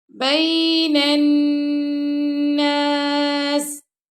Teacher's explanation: وَتُصْلِحُوا بَيْنَ النَّاسِ نون کو ہم نے نون سے ملا دیا اور یہاں پہ ہم نے غنہ کیا، اور سین پر ہم نے سٹاپ کیا تو سین کو ہم نے ساکن کر دی، اس کی زیر ختم کر دی. بین الناس واللہ سمیع علیم.